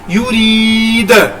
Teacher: کیونکہ دال حروف قلقلہ ہے اس وجہ سے دال کو جب ساکن کریں گے تو قلقلہ بھی ہوگا